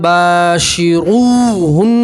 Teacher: نون کے اوپر تشدید ہے, نون میں گننا کریں گے. ٹھیک ہے, را کے اوپر پیش ہے, را کو موٹا پڑھیں گے, پور پڑھیں گے